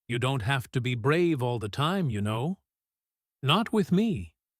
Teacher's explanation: The word brave gets a gentle stretch here, sympathetic rather than admiring, and not with me falls softly at the end, simple and reassuring, closing the small gap that opened between them just moments before.